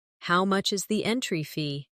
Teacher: Stress entry fee, so it's clear.